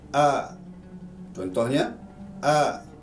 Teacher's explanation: Daripada 6 tersebut terbagi pada 3. Iaitu hamzah dengan ha. Dia dipangkal kerengkung.